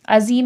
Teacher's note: عظیم میں یا ساکن سے پہلے زیر ہے، کھینچ کے پڑھا جائے گا. زا سختی سیٹھی کے ساتھ پڑھا جائے گا.